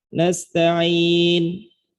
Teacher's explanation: Maka ketika sukun, ketika kita baca dengan mad arid li sukun, boleh kita baca dengan 2 harokat. Nasta'in. Atau boleh berhenti dengan 4 harokat.